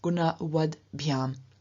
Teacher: But in front of biham, the ending which begins with a voiced consonant, we then have the T, which is unvoiced, also becoming voiced, so changing into a D, and therefore we have gunawad biham.